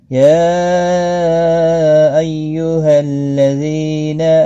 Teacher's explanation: یا یہاں پر مد منفصل ہے، 3 الف کے برابر کھینچ کر پڑھیں گے